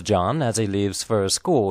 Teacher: links to the a of s and you will recall that the pronoun he usually does not have an H sound